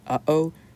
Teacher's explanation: We use the glottal stop in English a bit. For example, like in uh-oh, there's a glottal stop there.